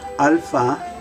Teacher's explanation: instead of the a sound the a will have the ah sound as in father